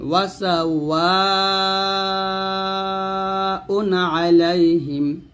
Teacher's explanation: ওয়াসাওয়া ওয়াতে চার টান দিবেন